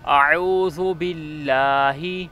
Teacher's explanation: یہاں حمزہ اور عین کی ادائیگی میں فرق رکھنا ہے۔ اب اعوذ پہلے حمزہ ہے پھر عین ہے، تو ہم نے ان دونوں کا فرق رکھنا ہے۔ · حمزہ گلے کے نیچے سے ادا ہوتا ہے اور عین گلے کے درمیان سے ادا ہوتا ہے